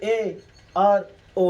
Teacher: अर्ध संवृत स्वर, जिस स्वर का उच्चारण करने में लगभग आधा मुंह बंद रहे, उसको हम कहेंगे अर्ध संवृत स्वर